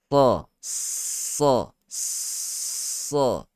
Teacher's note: Letak lidah kita di bawah. Sentuh pada gigi kacip bawah. Dan tebalkan. Lekukan pada lidah. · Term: huruf sad